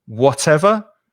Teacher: if I want to give emphasis to the word, I pronounce the T, whatever, and stress it, whatever.